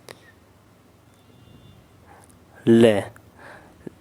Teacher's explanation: पार्श्विक व्यंजन होते हैं हमारे ले। ले का उच्चारण करते समय हमारी सांस जीभ के बगल से होकर जाती है।